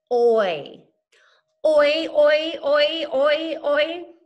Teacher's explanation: Oi has one sound. It comes in one syllable, but you can see how my mouth changes. That's where it glides from one sound to the next. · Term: Vowel diphthongs